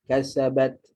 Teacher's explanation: Ta ni, dia ada sifat hams. Hams. Bila kita baca, kita kena keluarkan angin. Lepaskan angin daripada mulut.